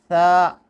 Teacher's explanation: آواز کے ساتھ تھوڑی سی ہوا بھی خارج ہوتی ہے، یعنی ثا۔ تو یہ ثا کے جو ادائیگی کے وقت یعنی زبان جو ہے تھوڑی سی یعنی اس کے قریب ہوتی ہے اور وہاں سے ایک ہوا کے ساتھ ایک آواز نکلتی ہے بغیر سیٹی کے، یہ ہے ثا۔